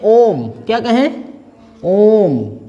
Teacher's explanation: अगर हम एक बड़ी ध्वनि में ओम ऐसे कहते हैं तो इसके उच्चारण में हमको अधिक समय लगता है, लगभग ह्रस्व स्वरों की तुलना में लगभग 3 गुना समय लगता है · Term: प्लुत स्वर